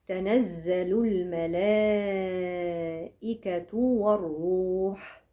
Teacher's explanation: الوصل الملائكه عندي هنا مد ايه متصل لانه في ذات الكلمه التقى المد والهمزه في نفس الكلمه يبقى مد ايه متصل يمد اربع حركات